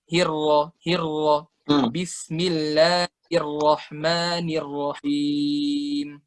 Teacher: Ro-nya itu cuma sejenak doang, nggak kebanyakan, nggak kepanjangan ro-nya.